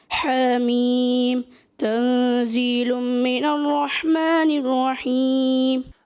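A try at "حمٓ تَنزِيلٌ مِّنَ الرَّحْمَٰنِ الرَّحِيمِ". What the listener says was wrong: اچھا، جب یہ اب حامیم، اب یہ مد لازم ہے، آپ کو کھینچنا ہے، آپ نے کم کھینچا، اس مد کو پورا کریں، کیونکہ مد لازم کی مقدار جو ہے تمام قراء کے نزدیک 3 الف، 6 حرکات.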